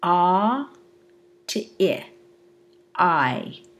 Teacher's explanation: from a low jaw position to a high jaw position, and we have a higher F1 for our low jaw position and a lower F1 to our high jaw position. · With I, we're moving from a central vowel to a front vowel, and so we have the movement from a lower F2 to a higher F2, because as we move from central to front, we have the second formant going up. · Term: diphthong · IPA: aI